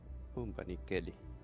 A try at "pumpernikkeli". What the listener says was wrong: Yeah, and you missed an R. It's Pumper.